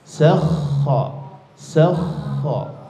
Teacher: Maka enggak boleh putus di situ. Dia mesti bergetar di tenggorokannya di makhraj huruf kho itu. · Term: rokhoah